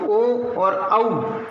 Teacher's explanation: अब ए और ऐ जब वर्ण बोलते हैं तो उसमें हमारा कंठ और तालु दोनों स्पर्श कर रहे होते हैं, ए ऐ। उसी प्रकार कंठ और ओष्ठ से बात करेंगे तो ओ और औ, इसमें कंठ ओष्ठ से दोनों उच्चारित हो रहे होते हैं